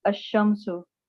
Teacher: When al is prefixed to a noun beginning with a solar letter, the L of al is assimilated to the solar letter. Example, al-shams, the sun, is pronounced ash-shamsu.